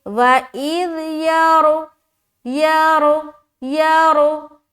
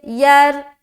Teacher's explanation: موٹا پڑھیں گے کیونکہ زبر ہے